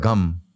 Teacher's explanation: the root of the tongue is touching when you say gum